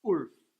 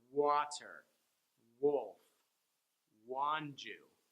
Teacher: No, you got to start your lips kind of going down. You vibrate your vocal cords and start the motion of your lips forward and then back.